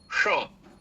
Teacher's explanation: जब मूर्धन्य सकार का उच्चारण करना हो तो आप अपनी जीभ को जब ज्यादा मोड़िएगा और ऊपरी तालु से आगे जाके थोड़ा स्पर्श करने की कोशिश करिएगा, और वहां से जब उच्चारण करिएगा श का, तभी सही मायने में श का उच्चारण होगा।